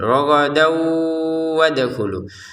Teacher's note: bisa digabungkan tapi dengan cara dimasukkan tanwinnya ke wawu disertai dengungan